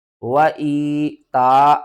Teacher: یا ساکن سے پہلے زیر ہے، حروف مدہ ہے، 1 الف کے برابر کھینچ کر پڑھیں گے